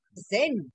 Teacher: the emphasis is on pre, present. And that is why the accent has come after pre.